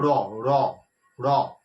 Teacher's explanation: জিভটা ওই তালুর কাছে একটুখানি স্পর্শ করে দিয়ে জিভটা টক করে নেমে চলে আসছে